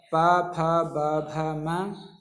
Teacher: अब ओष्ठ से किस किस का उच्चारण स्थान होता है, तो पहला है उकार, प वर्ग प, फ, ब, भ, म तथा उपदमानीय प, फ जो ये चिन्ह लगे हुए हैं इनको उपदमानीय कहते हैं। तो वर्णों का उच्चारण स्थान ओष्ठ है, इसलिए इन वर्णों को ओष्ठीय वर्ण भी कहते हैं